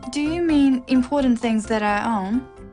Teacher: It's a yes-no question with a rising tone.